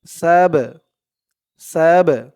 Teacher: এই বা টা হচ্ছে কলকলার হরফ ধাক্কা দিয়ে পড়তে হবে কলকলা মানে ধাক্কা দিয়ে পড়া ধাক্কাটা কেমন হবে সিন বা জবর